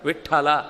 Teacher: ಆ ಠ ಅನ್ನುವ ಮಹಾಪ್ರಾಣ ಉಚ್ಚಾರ ಮಾಡುವಾಗಲೇ ಎದೆ ಮೇಲೆ ಒಂದು ಹೊಡೆದಾಗ ಆಗುತ್ತೆ